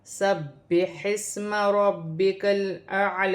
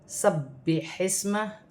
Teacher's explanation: سین کو ہا کے ساتھ ملا کر پڑھا جائے گا، ہا کو اپنے مخرج سے ادا کیا جائے گا، ہا حروف حلقی میں سے ہے۔